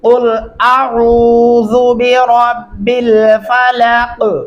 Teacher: जाल नरमी से अदा करेंगे